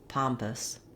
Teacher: the word pompous has two syllables, and the stress is on the first syllable, pom. So letter O in pompous says the ah vowel.